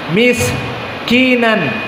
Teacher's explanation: Maka sin di sini sifatnya adalah al-hams, dan al-hams sifatnya keluar nafas udara di saat disukunkan. Maka tidak ditelan miskinan, tapi miskinan.